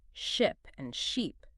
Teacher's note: the only difference between two words is how long you hold that vowel sound